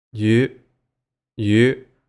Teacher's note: That was the high rising tone.